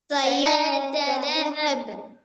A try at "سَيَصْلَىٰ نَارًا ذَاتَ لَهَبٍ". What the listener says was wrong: সায়াস, এখানে সদ আছে। سيصلى نارا ذات لهب.